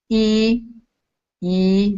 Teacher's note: you can feel it in the front of your mouth and almost closed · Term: front closed vowel